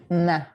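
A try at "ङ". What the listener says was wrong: open your mouth. Listen, open your mouth. And then the tongue in the back of the throat. Nga, nga. Nga. Because if you close your mouth, you can't get there, right?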